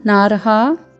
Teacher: न में आ का स्वर, फिर ह में रेफ के रूप में र का प्रयोग है, फिर साथ में दीर्घ स्वर है